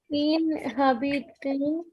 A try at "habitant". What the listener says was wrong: Un habitant. There's no ha sound in French. Un habitant. So you're going to add an e in that.